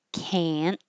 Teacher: you won't hear the T. Can't. But your tongue will go up to the T position, which is the same as the N.